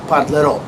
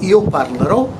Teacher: And the emphasis is at the end.